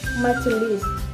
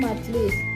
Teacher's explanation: Majelis kehilangan fonem e sehingga menjadi majlis. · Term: sinkop